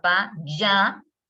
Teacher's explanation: y en ya adquiere el sonido de la doble L, ¿no? Ahí aparece el yeísmo